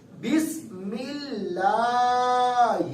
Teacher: جیسے کہ یہاں پر پڑھیں گے, اب اللہ کے لام سے پہلے والے حرف کی نیچے حرکت ہے اوپر ہے نیچے. اب اللہ کے لام کی آواز باریک ہوگی